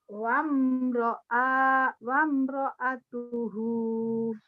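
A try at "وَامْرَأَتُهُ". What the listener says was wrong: Coba hentikan. Salah. Coba hentikan. Iya, nggak ada yang panjang. Karena nggak ada madnya. Dan ini kalau mad seperti ini kalau dihentikan jadi pendek. Ini namanya mad silah qasirah.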